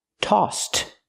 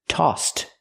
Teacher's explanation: We use the t sound after the s because the s in toss has no voice. So we use the t sound for the ed.